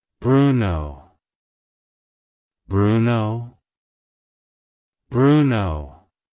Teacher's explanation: to pronounce it correctly emphasize the oo sound in the first syllable and the O in the second syllable the stress is on the first syllable